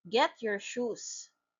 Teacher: It is a falling intonation because it commands.